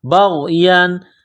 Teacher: تنوین کے بعد حمزہ ہے، حروف حلقی ہے تو تنوین پر غنہ نہیں کریں گے، آواز ناک میں نہیں چھپائیں گے